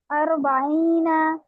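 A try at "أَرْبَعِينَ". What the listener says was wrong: और ये रा को ना टंग स्प्लिट नहीं करते, ये पहले भी कई बार बता चुकी हूँ, रा में टंग को स्प्लिट नहीं करना। अर, अर नॉट अर। अर, अरबाईना, पूरा 2 काउंट करिए। अरबाईना।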